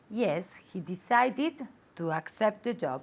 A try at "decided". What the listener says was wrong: Decided. It's not fast. It's an extra syllable. So don't say decided. It's decided. Okay, it's an extra syllable.